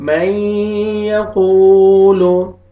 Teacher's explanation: गुन्ना करेंगे, नाक में आवाज लेके जाएंगे